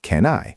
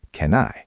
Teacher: The N slides over to the I.